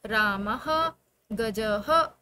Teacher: हैं ह इसका जो साउंड होता है वो होता है ह लिखते तो यह दो बिंदी है लेकिन इसका साउंड क्या होगा ह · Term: विसर्ग